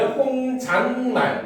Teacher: 사이시옷이 니은으로 발음되는 추가적인 예로는 아랫니, 혼잣말을 들 수가 있겠군